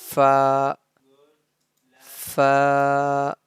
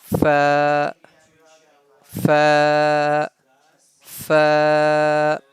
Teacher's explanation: Fa pronounced with the edge of our upper teeth and with the wet part of our lower lip.